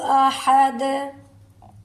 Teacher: अहद दाल पर कलकला होगा। ह को हलक से निकालेंगे। ये दो कश्मी हा जो है ये सीना की तरफ से निकलेगी।